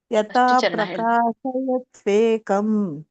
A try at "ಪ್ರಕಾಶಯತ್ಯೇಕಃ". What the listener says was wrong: ಕಮ್ ಯಾಕೆ? 2 ಇದ್ದಾಗ ಏನಿದೆ ಅಂತ ಹೇಳಿದ್ದೆ ನಾನು ನಿಮ್ಗೆ? ಕಹ ಅಂತ ಹೇಳಿದ್ನಲ್ಲ. 2 ಇದ್ದಾಗ.